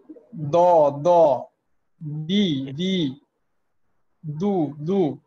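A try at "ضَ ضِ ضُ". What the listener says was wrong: হ্যাঁ দিবে, এই মোটাটা বোধহয় একটু কম হয়ে যাইতেছে, এই মোটা আরেকটু বেশি করতে হবে।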